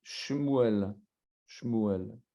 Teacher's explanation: le Sheva, il est muet